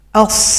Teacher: Sofir itu artinya ada suara yang tajam seperti bersiul, itu punya 3 huruf saja, sod, zai, sin. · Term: bunyi tajam